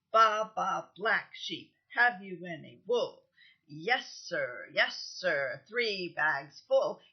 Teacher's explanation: You see there are different numbers of syllables in each line, but same number of stresses or accents, just 2. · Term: accentual meter